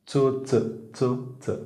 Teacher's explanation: जिभेच्या कडा वर गेलेला नाहीये जिभेचा शेंडा समोरच्या दिशेने आला दाताच्या मागच्या भागाला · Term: दंत तालव्य